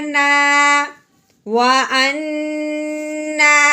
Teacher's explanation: नून के ऊपर लगी हुई खड़ी ज़बर हो, खड़ी ज़ेर हो या उल्टा पेश हो, उसको हमने एक अलिफ के बराबर लंबा करना है